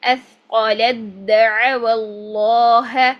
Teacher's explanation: ٹھیک، اس کے بعد آپ دیکھیں کہ تا کا دال میں ادغام. تا کو ہم نے دال کے اندر داخل کرنا ہے، تو تا ختم کر دیتے ہیں